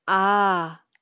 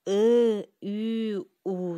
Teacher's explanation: А, десек, жаак кең ачылат. Ал эми ы, үй, у десек, жаак кууш ачылат.